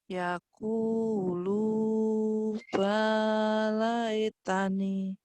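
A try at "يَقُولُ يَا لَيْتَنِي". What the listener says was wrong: Yaqulu ya. Ya titiknya kehalangin tadi. Ya titiknya ketutup tadi lagi. Yaqulu ya tekan. Yaqulu ya. Ya nyamber. Yaqulu ya laitani.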